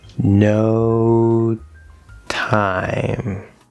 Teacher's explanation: this is vowel to consonant it's not going to connect and we really hear that t especially going slow